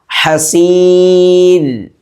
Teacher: ഹ ഇൻ്റെ മഖ്റജ് തൊണ്ടയുടെ മധ്യഭാഗമാണ്. നേരത്തെ ഐനിൻ്റെ മഖ്റജ് പറഞ്ഞ അതേ സ്ഥലം.